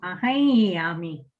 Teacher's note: అనుస్వర స్థానంలో యకారం వస్తుంది, యకార సవర్ణం. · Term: అనునాసిక యకారం